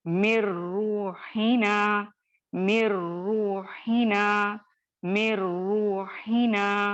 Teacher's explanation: मीम को बारीक रखेंगे और यहाँ पे आप देख रहे हैं इदगाम यानी इदगामे कामिल बिला गुन्ना हो रहा है। ठीक है, इदगामे कामिल बिला गुन्ना हो रहा है।